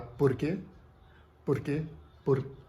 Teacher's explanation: flep flep nada mais é do que a ponta da língua fazer um toque rápido a quick touch um toque rápido nos alvéolos